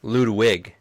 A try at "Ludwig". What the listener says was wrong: German, it's Ludwig. It's German, you pronounce the W as a V.